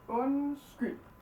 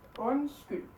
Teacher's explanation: Both of these D's are silent, so you don't need to worry about them.